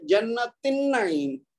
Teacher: ये जो जन्ना की ता है गोल, ये इस अन्नईम की नून के साथ इदगाम हो जाएगा और बीच में ये जो हमजा है ये पढ़ने में नहीं आएगा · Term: हमजा वसली